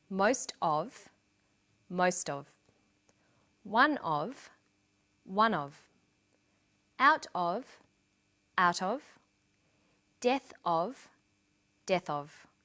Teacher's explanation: Notice that of in these phrases is unstressed.